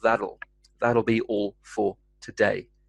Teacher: the hard T sound becomes a softer D sound, that'll, most of the time